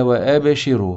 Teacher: الراء هنا في هذه الحاله مفخمه لانها مضمومه · الحكم الاول القلقله في الباء لان الباء من حروف القلقله المجموعه في جمله قطب جد والحكم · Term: تفخيم الراء